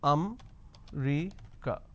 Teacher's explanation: in northern part of the country, they pronounce this as Amrica. So they drop a syllable.